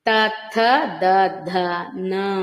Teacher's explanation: న అంటే నాలుకను ఉపయోగించి దంతాల సహాయంతో పలుకుతున్నాం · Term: దంతవ్యాలు